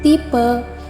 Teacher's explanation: bawah Tengah depan tak bundar yang direalisasikan dengan bunyi e